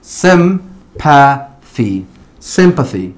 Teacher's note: la primera Y tiene un short E sound y la última tiene un long E sound